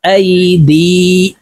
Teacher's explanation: হামজা ইয়া জবর আই, দাল ইয়া জের দি, দাল একালিফ টান হবে কারণ জেরের বাম পাশে জজমলা ওয়াও মদের হরফ, তো এই দাল এই ইয়ার সাথে একালিফ টেনে পড়ব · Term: মধ্যে তবাই